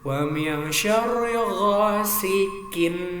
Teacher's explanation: Ada mantul namanya qalqalah di akhir kalimat, qalqalah kubro. Nun mati bertemu shin ya, jadi ikhfa namanya alias dengung